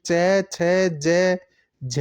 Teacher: इन वर्णों का उच्चारण स्थान तालु होता है। ये तालव्य वर्ण कहलाते हैं।